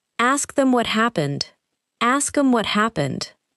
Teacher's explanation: Pronouns becoming very weak. Words like him, her, them, and it may almost disappear inside a sentence.